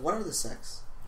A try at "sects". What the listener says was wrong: SECTS, not SEX.